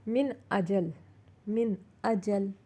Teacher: نون ساکن کے بعد الف یعنی حمزہ آیا تو ہم اسے ظاہر کر کے پڑھیں گے